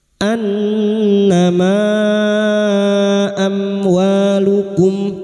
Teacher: mim sukun bertemu wawu idhar syafawi, mim sukun dibaca jelas tanpa mendengung. Amwa fathah bertemu alif 2 harakat mad tabi'i.